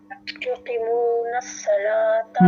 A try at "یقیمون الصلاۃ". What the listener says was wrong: نہیں، قاف کو یہاں پہ تھوڑا اس لیے کھینچیں گے کیونکہ یا ساکن ہے اور اس سے پہلے زیر ہے تو یا مدہ ہے. یا مدہ کو ہم ڈراپ نہیں کریں گے، کھینچیں گے تو یقیمون الصلاۃ.